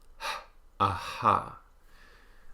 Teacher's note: and the unvoiced glottal fricative h, a, ha. We have 3 approximants, the alveolar the palatal y, and the labial velar, meaning lips rounded, back of tongue up, w, a, wa.